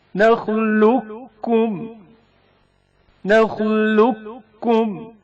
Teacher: ادغام متقاربین بھی کہتے ہیں. قاف ساکن کا کاف متحرک میں ادغام